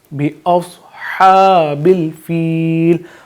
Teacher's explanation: صاد حروف مستعلیہ تو ہم اس کو پر پڑھیں گے، یعنی تھوڑا موٹا پڑھیں گے، ہا کو واضح کریں گے، اور آخر میں جہاں آیت مکمل ہو رہی ہے تو یہاں پہ یہ جو پھر ہائے مدہ یہاں پہ اس کا قاعدہ لگے گا، یعنی کہ فیل آواز ہم کھینچ لیں گے۔